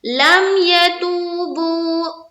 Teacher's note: لم یتوبو، لم میں جزم کا قاعدہ ہے، یا کو جلد پڑھیں گے، تو بو دونوں میں واو مدہ